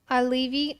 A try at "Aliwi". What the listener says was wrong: That would have been perfect. It would have been perfect except for you say your W's as V's because you're a Russian.